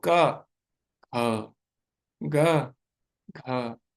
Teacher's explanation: तो इसमें लॉजिक है पहला जो होगा वह अल्पप्राण होगा यानी उसको बोलते समय अल्पप्राण मतलब उसको बोलते समय कम वायु हमारे मुंह से निकलेगी और महाप्राण जिसमें ज्यादा वायु मुंह से निकलती है तो क ख ग घ तो क को बोलते समय कम वायु निकलती है इसीलिए उसको अल्पप्राण बोला गया